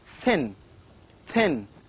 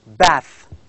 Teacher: it is a voiceless dental sound